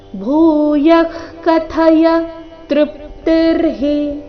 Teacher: ಕಥಯ ಭೂಯ ಆದ ನಂತರ ವಿಸರ್ಗ ಇದೆ ಮರಿಬಾರದು ಭೂ ಮಹಾಪ್ರಾಣ ದೀರ್ಘ ಬರಬೇಕು ಕಥಯ ಇಲ್ಲಿ ಥ ಮಹಾಪ್ರಾಣ ರಸ್ವ